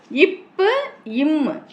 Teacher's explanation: மேல் இதழும் கீழ் இதழும் இணையும் நிலையில் பிறக்கும் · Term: இதழ் ஒலிகள்